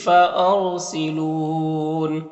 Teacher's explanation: را ساکن سے پہلے الف کے اوپر زبر ہے تو را کو پر پڑھیں گے